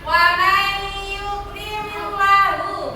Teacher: Jadi idgham bi gunna, memasukkan atau meleburkan dengan mendengung. Kalau dalam ilmu tajwid, apabila ada nun sukun atau tanwin bertemu huruf yang mau mim.